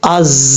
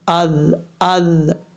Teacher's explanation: اب یہاں پر حمزہ کے بعد جو زا ہے، یہ زا جو را کی شکل میں آتا ہے، زا اس کے اوپر جب را کے اوپر نقطہ ہو، ون ڈاٹ ہو تو یہ زا ہوتا ہے. تو یہ را کی شکل میں جو زا آتا ہے یہ سیٹی کے ساتھ پڑھا جاتا ہے، جیسے از اس طریقے سے. اور جو ذال ہے وہ بغیر سیٹی کے ساتھ